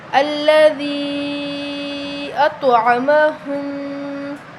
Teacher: چھوٹی مد ہے تو ہم اس کو 3 الف کے برابر لمبا کریں گے